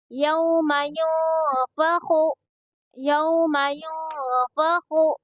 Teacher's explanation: اب یہاں پر اخفا ہوگا کیونکہ نون ساکن کے بعد میں فا آیا ہے، اس لیے یہاں پر اخفا ہوگا، اور اسی لیے نون کی آواز کو چھپا کر پڑھیں گے، یہاں پر خا کو پر پڑھیں گے، ٹھیک ہے، حروف مستعلیہ کے حرفوں میں سے نا خا، اس لیے اس کو پور یعنی موٹا پڑھا جائے گا